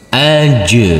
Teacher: Aj. harus kita pantulkan, harus terdengar pantulannya. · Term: qalqalah